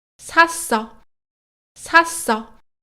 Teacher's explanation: A versão tensa continua sendo um S normal, mas agora geminado, como qualquer consoante tensa fora do começo das palavras.